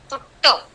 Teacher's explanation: ट का उच्चार करते समय आपकी जिह्वा जो है वो ऊपर जाती है। It touches the roof of your mouth. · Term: स्पर्श